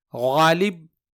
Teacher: हरफे गैन को अदा करने के लिए हलक पर थोड़ा दबाव डालना होता है और इसकी आवाज गाढ़ी और मोटी होती है